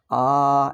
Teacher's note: ಒಂದು ಮಾತ್ರ ಉಚ್ಚಾರಣ ಕಾಲ ಅ ದೀರ್ಘದಲ್ಲಿ ಆ ಎರಡು ಮಾತ್ರಗಳ ಉಚ್ಚಾರಣ ಕಾಲ ಪ್ಲುತದಲ್ಲಿ ಮೂರು ಮಾತ್ರಗಳ ಆ ಎಂದು ಹೇಳ್ತೀವಿ